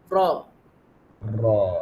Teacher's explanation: Getaran pada hujung lidah, tepi hujung lidah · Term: bergetar